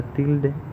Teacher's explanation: en la palabra tilde, la sílaba átona es de, porque es la que menos fuerza o menos intensidad tiene